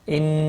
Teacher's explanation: نون مشدد پر غنہ ہوگا